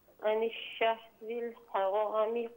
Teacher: हरामी में जो रा है इससे पुर पढ़िए